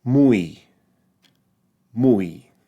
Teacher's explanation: the way I pronounce it in my dialect is more of a falling dip thong in other words the U the U has slightly more emphasis than the E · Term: falling diphthong